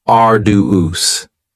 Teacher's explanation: arduous has three syllables and the stress is on the first syllable arduous now you don't hear that D sound that much it's